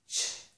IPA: tʃ